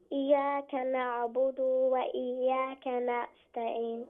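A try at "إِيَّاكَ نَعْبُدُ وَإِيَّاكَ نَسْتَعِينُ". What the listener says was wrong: No, don't say na'budu. Just say na'budu because there is no waw after that. It should be dal dhamma na'budu. Iyyaka na'budu. And the ya has shadda. Iyyaka na'budu.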